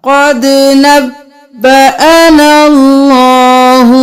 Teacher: یہاں پر قد نبا, نبا نہیں کرنا, نب اور پھر با دو بار